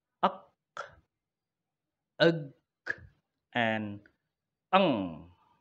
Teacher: produced with the back of the tongue pressed against the soft palate or velum are called velar. The English velar sounds are uk, ug, and ng.